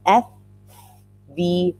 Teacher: the upper teeth and the lower lip I call this a teeth lip blower because you have to blow air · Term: teeth lip blowers